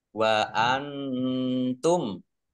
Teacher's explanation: nun sukun bertemu dengan huruf ta bacaan Ikhfa dibaca samar-samar